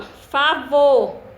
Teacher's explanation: A sílaba vo é a de maior intensidade, né? Foi a sílaba mais forte. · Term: sílaba tônica